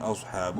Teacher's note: حمزہ صاد زبر اوس، منہ بھر کے پڑھیں گے صاد کو